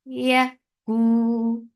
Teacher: ku for the circle lips, make it 2 counts long.